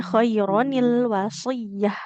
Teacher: bunyi nun sukun pada tanwinnya diubah menjadi nun kasrah